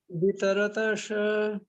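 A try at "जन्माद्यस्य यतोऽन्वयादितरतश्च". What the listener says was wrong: itaratash tasha नहीं itaratash tash. The sh sound is half. The sh sound is half. itaratash इतरतश,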